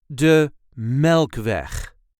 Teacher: The emphasis is on the first syllable of the second word.